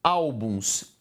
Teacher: a penúltima é a tônica, paroxítona